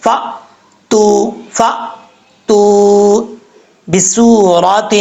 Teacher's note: سین سیٹی کے ساتھ پڑھا جاتا ہے، آگے واو مدہ ایک الف کی مقدار لمبا کر کے پڑھیں گے، اور را کے اوپر زبر ہے، را پر پڑھا جائے گا۔